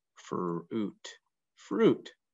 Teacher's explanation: you don't hear the I, you just hear the U sound making the ooh